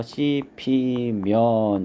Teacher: 비읍이 히읗과 만나면 비읍의 거센소리 피읍으로 줄어들게 되어 있거든요. 그래서 발음을 하면 받침 없어지고 뒤에가 피읍으로 돼서 씹히면 이렇게 발음이 됩니다.